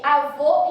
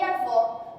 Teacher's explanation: existe um avô fechado, que é o masculino, e o avó com acento agudo, que é o feminino.